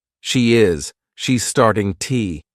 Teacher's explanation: instead of to, you can use an unstressed T